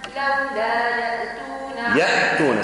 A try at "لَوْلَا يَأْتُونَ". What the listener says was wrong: سكن الهمزة قلش يأتون